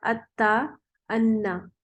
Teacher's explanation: تا اور نون ایک ہی جگہ سے نکلتے ہیں